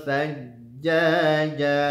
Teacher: berikan nabrah tekanan suara kepada jimnya karena ada tasydid